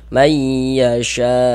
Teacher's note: Tapi kalau misalkan kita berwakaf di huruf hamzah ini, mad wajibnya karena dia disukunkan boleh dibaca sampai dengan 6 harokat seperti itu